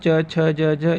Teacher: छ ध्वनि का उच्चारण स्थान तालव्य व्यंजन